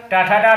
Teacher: टू माने टा वर्ग, टाठा डाढ़ा का और रा का तथा खटकोण वाले खा का उच्चारण स्थान मूर्धा होता है